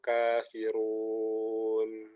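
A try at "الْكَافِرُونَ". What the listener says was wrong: roknya baru tebal, jangan run, ya, Jadi tebalnya tebal maksimal gitu. Tapi coba rohnya jelas ya. Jangan ru, masih kurang.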